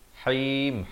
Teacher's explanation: ha pedas ya, di pertengahan kerongkong